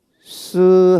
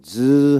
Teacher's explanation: 스 하면 진동이 없고 즈 하면 진동이 있지